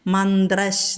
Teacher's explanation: അപ്പോൾ ചാ വിസർഗം കഴിഞ്ഞിട്ട് ചാ വന്നിരിക്കുന്നു. വിസർഗം കഴിഞ്ഞിട്ട് ചാ വന്നാൽ വിസർഗസ്ഥാനത്ത് ഷ എന്ന് ചൊല്ലണം. മന്ത്രശ് എന്ന് പറയണം.